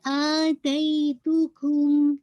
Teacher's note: میم ساکن کا میم میں ادغام ہوگا تو پورا فل غنہ, ہونٹ آپ کے کمپلیٹلی کلوز ہو جائیں گے